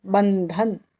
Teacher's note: तो ब के ऊपर जो अनुस्वार है उसका उच्चार हम न की तरह करेंगे